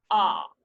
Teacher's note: so your tongue is low, and it's back · it represents the extreme of a low back vowel